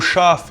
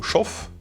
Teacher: Le a long /aː/ en allemand équivaut à un o /ɔ/ en yiddish.